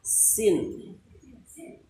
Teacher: huruf sin ini bukan hanya sekedar bunyi sin, tapi sin itu harus tipis, sin. Walaupun mungkin penyebutan saya belum ini juga, tapi minimal kita berusaha supaya setipis mungkin sin itu.